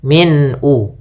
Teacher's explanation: Kemudian pelafal min ada bacaan izhar halqi yaitu ditandai dengan tanwin pada huruf mimnya bertemu dengan hamzah. Maka suara tanwinnya harus jelas